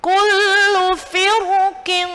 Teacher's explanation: Karena dia bermuka dua, ya, setelahnya ini huruf qaf. Huruf qaf termasuk huruf isti'la, maka dia boleh dibaca tebal. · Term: jawazul wajhain